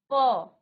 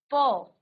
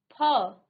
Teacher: आपके दोनों होठ जो हैं सांस का अवरोध कर रहे हैं। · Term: ओष्ठ व्यंजन